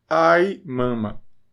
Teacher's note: E é o I normal, não é o I nasal, nem nada. Na grafia unificada que nós vimos na última aula, esse I no início da palavra é o I simples, não é o I nasal.